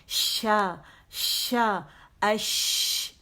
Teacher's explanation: ٹھیک ہے, کیونکہ اس میں ہمس ہے. ہمس کا مطلب ہے کہ ہوا کا جب اس لیٹر کو مدہ کرتے ہیں اش, تو ہوا منہ سے خارج ہوتی ہے باقاعدہ. ٹھیک ہے, اس میں ہمس ہے, الہمس.